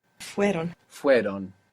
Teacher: So the I, the E sound, falls away.